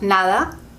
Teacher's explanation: when the D is in the middle of a word, like nada, you can hear it's very soft, nada, or sometimes we just say na, because we can't bother pronouncing it sometimes.